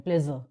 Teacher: ज में आपको इधर यहाँ पे जो है आपका एक वॉइस्ड वाइब्रेशन फील होगी, that is your voiced one.